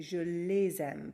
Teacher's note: If we want to say I love my parents and make that into I love them, j'aime mes parents, this time our direct object pronoun is les, and there's no vowel before a vowel, so we just keep it je les aime, but we pronounce the S, we make a liaison